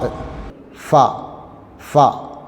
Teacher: മേലെ മുൻപല്ലുകളുടെ തല കീഴ്ചുണ്ടുകളുടെ ഉൾഭാഗത്ത് തട്ടണം